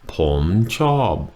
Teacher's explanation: The tones are pom, chob, rising, falling.